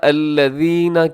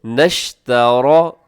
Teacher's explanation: الذین کے آخر میں جو نون آتا ہے اس نون کو آپ شین کے ساتھ ملائیے گا